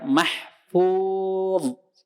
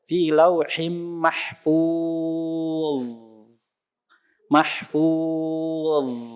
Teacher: Dho rokhwah. Rokhwah. Maka dialirkan terus.